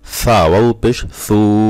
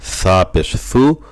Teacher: এই সা ওয়া পেশ সু টান না দিলে কিন্তু এই সা পেশ সু হয়ে যাবে, ওয়াওটা বাদ হয়ে যাবে। এজন্য টান, এক আলিফ মত টান বাদ দেওয়া যাবে না।